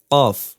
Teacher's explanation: তালুর সঙ্গে লাগিয়ে উচ্চারিত হয় অফ এই যে জিহবার গোড়া বরাবর উপরে তালুর সাথে লাগবে